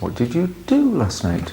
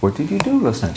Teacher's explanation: we can see that the sentence is going up it's a rising intonation and then it it falls a little bit at the end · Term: intonation pattern